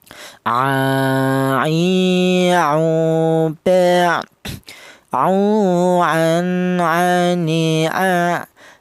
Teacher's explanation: Huruf ain ini keluarnya huruf berasal dari tengah tenggorokan ya, dimana tengah tenggorokan itu ditempati dua huruf, yaitu huruf ain ini dan huruf ha ya.